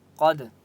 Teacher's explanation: قاف کو موٹا پڑھیں گے مستعلیہ کی وجہ سے، ٹھیک ہے، اور دال کے اوپر قلقلہ ہوگا